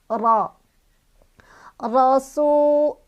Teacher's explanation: Ro bunyi huruf seolah-olah memenuhi semua rongga mulut kita. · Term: tafkhim